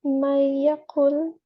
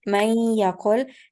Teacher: May yaqul, having the ghunna sounds, you didn't pronounce the noon.